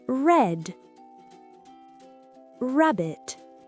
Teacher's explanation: Reculez la langue en arrière sans toucher le palais. Ne grattez pas la gorge. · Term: son R